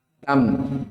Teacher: Ketika asalnya dibaca yastanbi'unak, tapi karena bertemu dengan ba, maka nunnya diganti menjadi mim. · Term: iklab